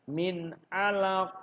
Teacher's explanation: membacanya diwaqofkan atau dibaca berhenti maka huruf qaf harus dibaca sukun karena dibaca sukun maka huruf qaf harus di pantulkan di Qalqalah kan Min Alaq Pop Hai kemudian yang menarik Hai